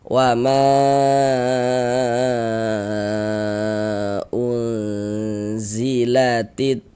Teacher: kita baca wama kita panjangkan 4 sampai dengan 5 harakat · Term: mad jaiz